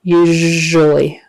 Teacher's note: Make sure that S in the middle is a ZH sound. Usually. ZH is just a voiced SH.